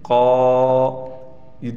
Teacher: मद्दा वाली जो अलिफ हमने पढ़ी उसका मखर है जोफे दहन यानी मुंह के अंदर की खाली जगह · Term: मद्दा वाली अलिफ